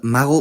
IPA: ˈmaɣo